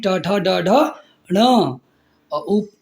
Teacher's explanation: मुर्धा क्या होता है मुंह के भीतर की छत का अगला भाग